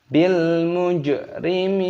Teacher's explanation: Mimnya dibaca panjang, ada tanda ya sukunya, dipanjangkan 2 ketukan, dan nunnya di sini dibaca mati ataupun sukun, mad adil sukun.